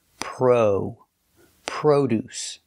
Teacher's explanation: The word is produce. We use the long O like no and go.